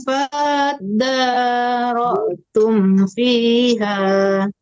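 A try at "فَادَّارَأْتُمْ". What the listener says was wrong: ulang lagi karena fa-nya dipanjangin ya. Fa-nya jangan panjang. Depannya ada tasdid ya, langsung masuk ke tasdid.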